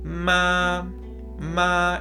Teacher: el primer tono es plano totalmente digamos recto no hay cambios en el entonces suena de la siguiente manera